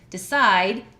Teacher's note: Decide, side is the stressed syllable. I has the alphabet vowel sound in that word.